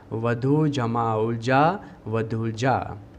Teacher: पहले शब्द में बड़ा ऊ है यानी कि दीर्घ ऊ है, दूसरे शब्द में भी बड़ा ऊ है यानी कि दीर्घ ऊ है। इन दोनों के मेल से बड़ा ऊ यानी कि दीर्घ ऊ स्वर हमें मिलता है, इसीलिए शब्द में परिवर्तन आया, वधु जमा उलझा वधुलझा।